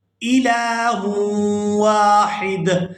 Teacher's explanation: وقف کی صورت میں دال جو ہے یہ ساکن ہو جائے گا ، ہا کو دال ساکن کے ساتھ ملا کر ادا کریں